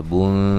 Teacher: نون تنوین کا اخفا ہے باریک